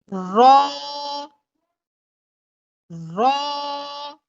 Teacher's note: रॉ के आखिर में भी अलिफ है तो हम रॉ को 1 सेकंड खींच के या 2 सेकंड खींच के पढ़ेंगे